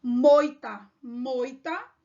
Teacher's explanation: começa pela vogal e depois para semivogal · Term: ditongo decrescente